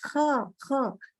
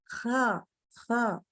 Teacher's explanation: Kalau kha itu ada gesek. Harus kerasa gesek ya. Kha. Cuman keluar udara, gesek keluar udara gitu. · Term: sifat gesek